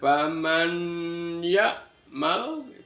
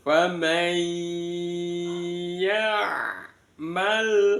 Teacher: Yang pertama, famai, nun sukun bertemu dengan ya, dibaca idgham bi ghunnah, dimasukkan dengan mendengung. Jadi bunyi n-nya itu dimasukkan ke bunyi ya